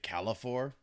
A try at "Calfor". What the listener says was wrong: Calfor. No I. No I. Just Calfor.